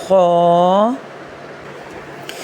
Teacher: खलक के ऊपरी हिस्से यानी फर्स्ट पोर्शन से अदा होता है। इसको हम वहां से अदा करते हैं जहां से आप हम लोग जैसे गरगरे करते हैं गरारे करते हैं।